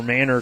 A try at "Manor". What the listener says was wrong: We need to correct it. We've been saying it wrong. It's Austin Manor. with a long A, Austin Manor.